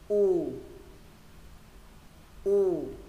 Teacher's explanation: U thứ hai mô hình ống nâng cuống lưỡi này